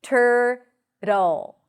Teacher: You start with a T sound, then it's the as in stir, tur, and then a flap T-L, which is a tricky transition